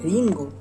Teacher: Una R alveolar vibrante simple sonora.